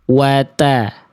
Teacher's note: Nah sekarang bedanya, kalau qaf nggak boleh keluar percikan nafas kan ya tadi, karena berubah jadi huruf kaf ya. Sekarang kalau huruf ta harus ada percikan nafasnya, tapi nggak boleh berlebihan.